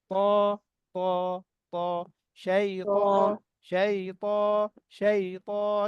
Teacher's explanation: তখন কি হবে, ত জিহ্বাটা তো আপনি আগায় দিচ্ছেন, আগায় দেওয়ার কারণে যখন আওয়াজ করতেছেন, জিহ্বার পেছনের অংশ মাঝখানে অংশটা উঁচু হয়ে যাবে, আওয়াজটা ভারী হবে